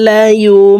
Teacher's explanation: প্রিয় দর্শক, লায়ুম এখানে ইকলাব গুন্না, নুন সাকিনের পর ইকলাবের হরফ বা আসছে, এই কারণে এই ছোট্ট মিম দ্বারা পরিবর্তন করিয়া গুন্নার সহিত পড়ব। এই জজমলা নুন বাদ পড়ে যাবে, এই বা ছোট্ট মিমের সাথে গুন্নার সহিত পড়তে হবে।